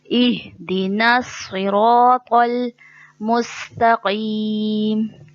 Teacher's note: صوت موٹے حرفوں میں سے ہے, یہاں عموماً جو غلطی ہوتی ہے صوت کو سین بنا دیا جاتا ہے